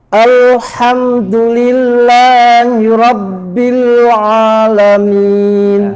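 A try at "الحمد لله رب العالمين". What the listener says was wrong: Haknya bukan al-ha, bukan ha, al-ha. Dan ain juga bukan a. Harus pangkal lidah di bawah. Al-ha dan al-a. Tipis dua-duanya. Alhamdu Rabbil a.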